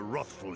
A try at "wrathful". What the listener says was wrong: Wrathful. He said rough. Far be it from me to make fun of pronunciation, but that's not how you say wrathful. It's wrathful. It's an A, not an O.